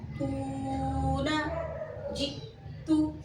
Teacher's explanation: آواز میں شدت پائی جا رہی ہے اور حمزہ ساکنہ میں جھٹکے کی آواز بھی آ رہی ہے